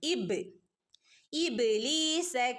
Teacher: പദത്തിൽ ഹംസ ഇവിടെയും മദ്് മുൻഫസിൽ തന്നെയാണ് ഓക്കേ ഇബലീസ ബന് സുക്കൂന് വന്നിട്ടുണ്ട് ബ കൽക്കലയുടെ ലെറ്റർ ആണ് അതുകൊണ്ടുതന്നെ ബന് ഫുൾ സുക്കൂൻ കൊടുക്കണം